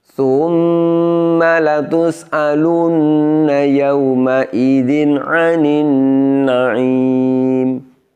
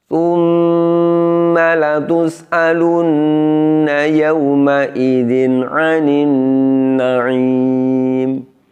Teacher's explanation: Jadi pada tsumma itu yang dibaca panjang adalah hunnahnya, bukan sa dhammahnya.